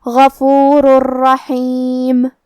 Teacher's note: ہم یہ تنوین کو را میں ملا کے بغیر غنہ سے لیکن تشدید کے ساتھ یہ حکم کو ادا کریں گے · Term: ادغام بغیر غنہ